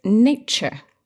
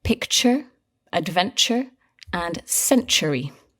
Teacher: the T is not pronounced T, as in to. It's pronounced ch, like in cheese. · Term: ch sound